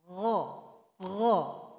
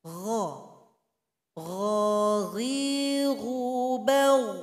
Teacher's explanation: Kita kasih harakat menjadi gha. Huruf gha keluarnya dari tenggorokan paling atas. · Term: huruf ghain